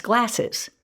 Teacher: suffix es then, instead, creates a buffer vowel between those two sibilants or hissing sounds. So glass becomes glasses, and as a listener, I hear es and its meaning of more than one.